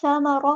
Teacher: را کو پورا ادا کرنا ہے، ہیوی لیٹر ہے